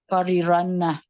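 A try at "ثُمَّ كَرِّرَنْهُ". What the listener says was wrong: Pakai kaf ya, karrirannah. Ini dikatakan bahwa yang kedua dari idgham adalah idgham bi ghairi gunnah atau bila gunnah. Kalau bi ghairi itu artinya tanpa ya. Berarti tanpa gunnah. Filami warosumma karironnah. Dalam pada huruf lam dan juga huruf ro ya.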